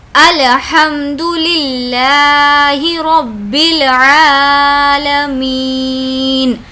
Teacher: می اس لیے کھینچ رہے ہیں کہ یہاں پر یا مدہ کا قاعدہ ہو رہا ہے